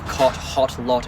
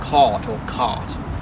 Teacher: the short o in words like cot hot lot is pronounced the same as that or vowel in words like law and thought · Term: cot Court merger